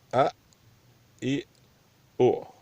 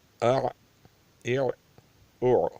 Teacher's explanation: حمزے کو سخت اور حمزے عین کو نرمی سے۔ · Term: ہمسہ